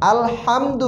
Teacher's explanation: হা গলার ভিতর থেকে চাপ দিয়ে আসবে